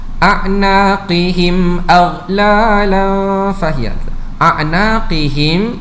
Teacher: Bagaimana cara bacaannya dipanjangkan dengan kadar empat harakat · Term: Mad Jaiz munfasil